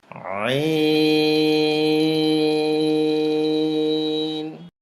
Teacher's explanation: কণ্ঠলের মাঝখান থেকে চাপ দিয়ে আওয়াজটা শুরু হবে, 4 আলিফ লম্বা হবে।